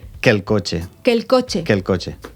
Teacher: són dos vocals que són iguals, aleshores ens mengem una. Dos E. Que el cotxe...